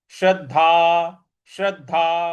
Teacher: श्रद्धा जो द है इस पर भी हल्का सा बल लगाएंगे